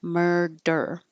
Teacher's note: It doesn't have to be a strong D with a lot of air pressure. It could be a quick alveolar flap.